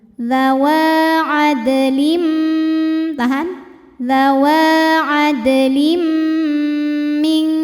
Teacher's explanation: Kemudian ada hukum idgham bi gunnah karena ada tanwin kasrah menghadapi huruf mim. Cara baca tanwinnya adalah dimasukkan atau dileburkan ke mim disertai bunyi dengung.